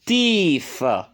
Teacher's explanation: On n'ajoute pas S, mais tout simplement tooth se change en teeth. Ça devient une voyelle longue.